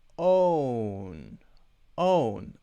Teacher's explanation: my mouth goes from wider to narrower